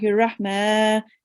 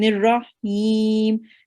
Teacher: the ha of the Rahma and the him needs to come from your throat